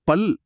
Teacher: பல் என்று சொல்லி பாருங்க. நாக்கின் ஓரங்கள் தடித்து பல்லின் அடியை தொடுவதை நீங்க உணரலாம் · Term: குண்டுல